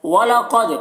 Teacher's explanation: قاف کو پر پڑھیں گے، دال میں قلقلہ کریں گے